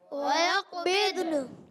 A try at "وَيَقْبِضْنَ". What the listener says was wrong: بے نہیں کرنا، ضاد پر زبر نہیں کرنا. ضاد کو ساکن رکھیں گے، ضاد بھی ساکن، نون بھی ساکن. وَيَقْ قلقلہ بھی قاف میں کرنا ہے.